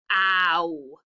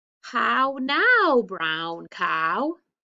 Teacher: it starts open for the o ah and then it kind of comes together like i'm kissing somebody for the w